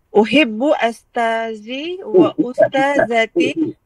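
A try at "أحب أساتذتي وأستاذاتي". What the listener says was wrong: Bukan bagi atas, bagi depan. Ustaz dengan ustazah.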